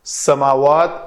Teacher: سین کی ادائیگی سیٹی کی آواز آئے گی، سا نہیں بنانا اس کو۔